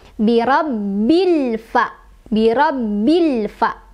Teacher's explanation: alif lamnya dibaca dengan jelas. Tidak boleh mantul, tidak boleh ditahan ya. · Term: alif lam qomariah